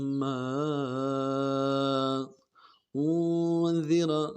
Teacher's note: الف تک اس کو کھینچنا ہے۔ ما لتنذر قوما ما انذر اخفا کرنا ہے، انذر ناک میں آواز لے جائیں گے ، آباؤہم کھڑا زبر ہے، آگے اس کو ایک الف مقدار